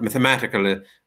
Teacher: in the word mathematically the third syllable is stressed